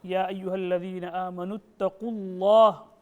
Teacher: even the qaf is mouthful and the whole word of Allah is also mouthful. But you're not making it fully mouthful.